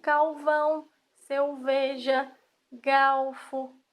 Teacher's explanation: A troca de R por L se chama lambidacismo.